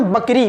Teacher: पूरा हम होठों को आपस में मिला लेते हैं